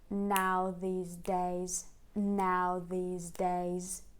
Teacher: in the middle we have this unstressed word Which is less brought out for the sake of Rhythm